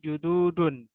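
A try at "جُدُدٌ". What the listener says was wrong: Pendek, jududun ya.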